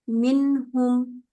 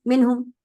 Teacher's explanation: हल्का सा हम पॉज करते हैं, तो वो जो हल्का सा टाइम है, वो उस टाइम तक हमारी जुबान नून के मखरज पे रहती है, और उस टाइम पे साथ साथ क्या हो रहा है कि नाक में भी आवाज जा रही है। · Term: इजहार